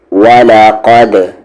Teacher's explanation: دال پر سکون ہے یعنی کہ دال پہ جزم ہے، قلقلہ کے ساتھ آواز باؤنس ہوگی. 5 لیٹرز ہے، اگر اس پہ جزم ہو سکون ہو تو وہاں پر ہم آواز کو باؤنس کرتے ہیں.